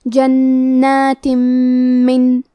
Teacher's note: کلمت جنات میں نون پہ تشدید ہے تو ہم دو حرف کے برابر نون کو پڑھیں گے، کیونکہ اس پہ کھڑا زبر ہے تو یہاں مد الف ہے، ہمیں مد الف کو بھی ظاہر کرنا ہے۔ · میم حروف الادغام بغنہ میں سے ہے تو ہم یہ حکم کو غنہ اور تشدید کے ساتھ ادا کریں گے